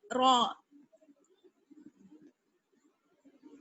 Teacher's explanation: امید کرتی ہوں آپ کو سمجھ میں آ گیا ہوگا، اور را کی ساؤنڈ بھی آپ نے سمجھ لی، مخارج بھی آپ نے سمجھ لیے کہ را کا مخرج کیا ہے. ثنایا علیہ اور ربائی کے مسوڑوں پر زبان لگانے سے را ادا ہوتا ہے